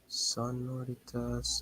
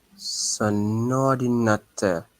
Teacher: link the two because this is a compulsory liaison.